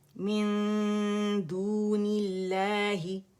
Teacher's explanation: پھر ہے من، اور یہاں پہ دال ہے نون سکون کے بعد اخفا ہے، یرملون میں سے نہیں ہے، تھروٹ کے لیٹر میں سے با نہیں ہے، تو یہاں پہ ہم نے دال کی وجہ سے نون کو چھپانا ہے